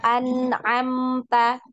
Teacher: Nah, dibaca jelas. Tidak boleh didengungkan, tidak boleh dipanjangkan ya. Nah, cukup dialirkan ya. Ada aliran suaranya. Biasanya untuk aliran suara ini hanya satu ketukan ya. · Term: izhar halqi